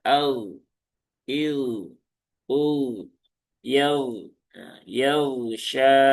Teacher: dipastikan huruf gain itu alirkan saja